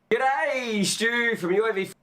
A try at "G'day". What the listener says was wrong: There's not so much of a g.